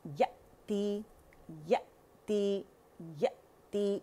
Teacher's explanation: तो ये जब हम करते हैं तो हमजा साकिन को झटका लगता है और आवाज़ के पट्टे जो हैं बिल्कुल ये बंद हो जाते हैं, वी शेप में होते हैं, करीब आ जाते हैं।